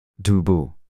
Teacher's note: start by making the T sound as in top but then add some voice to its so so that it sounds more like d in